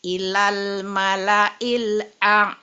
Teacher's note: ainnya lebih ditahan jadi ngalir. Al a jadi ditahan ya ilal malail a.